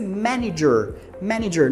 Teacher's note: né presta muita atenção na pronúncia aí de manager tá porque a gente tem esse segundo a ele é pronunciado como se fosse I